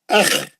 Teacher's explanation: کھردرا آواز اوپر کے حلق سے، موٹا مستعلیہ کا